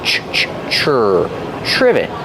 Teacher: It starts with TR, so we make the ch sound like chicken. Together with the R, ch, ch, chur.